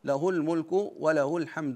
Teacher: يعني لا نصل الهاء نضم الهاء فقط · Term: عدم الصله